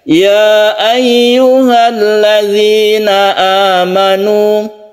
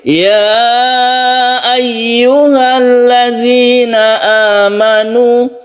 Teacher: Terpisah Oleh karena itu ini disebut Mad Jaiz Jaiz artinya boleh boleh kita membaca satu Alif saja ya ayyuhalladzina amanu atau dipanjangkan dua Alif ya ayyuhalladzina amanu itu karena dia itu terpisah antara ya dan